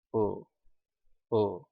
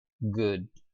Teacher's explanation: seperti e tetap di posisi u tetapi bunyi yang kita keluar yang kita keluarkan adalah agak sedikit O jadi antara U dan o